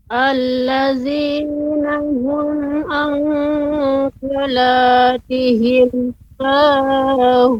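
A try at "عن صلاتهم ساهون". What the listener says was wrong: Akan tetapi tidak boleh berhenti ya Ibu, tidak tihim sahun, tidak juga. Tapi mengalir pembacaannya. An salatihim sahun.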